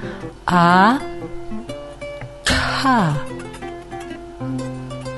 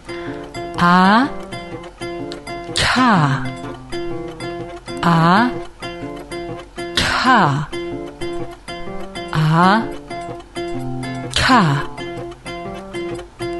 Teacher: der Zungenrücken wölbt sich nach oben und berührt den Gaumen er bildet sozusagen ein Verschluss da ist so ein Verschluss da PR die Zunge gegen den